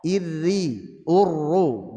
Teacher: menegaskan agar sifat takrir yang ada pada huruf ra bertasydid dibaca dengan samar atau lembut. Meskipun ini juga berlaku pada saat sukun maupun berharakat.